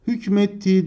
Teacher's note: K sesi yumuşayarak yumuşak g'ye dönüşmüş buna ünsüz yumuşaması denir